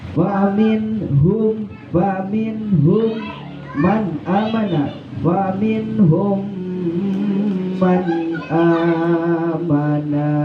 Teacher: Jadi diidghamkan mim yang mati langsung kita ke huruf mim, namun disertai dengan mendengung. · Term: idgham syafawi